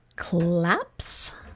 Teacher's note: It's a P. So the motor's off when we say P. And we just keep the motor off for S.